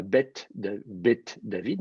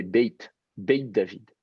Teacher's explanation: Baït, c'est la maison, baït, se contracte en bet, la maison 2, bet David, eh ben, on va avoir tendance à dire non pas bet David, mais beit David. Et le petit ye comme ça, une petite mouillure, ce qu'on appelle une mouillure, une palatalisation. Donc on fait passer un petit peu la langue sur le palais, et ça, vous entendez un petit ye comme ça, pas très fort, mais un petit peu.